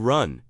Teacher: The R sound in English is made by pulling the tongue root back into the throat and the tip doesn't touch anything.